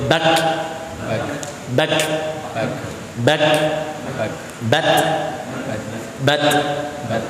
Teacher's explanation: B ditahan dulu suaranya B baru kemudian udara ngalir